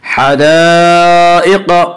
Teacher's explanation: क़ाफ को ऊपर पढ़ेंगे। क़ाफ हुरूफ़ मुस्तालिया में से है।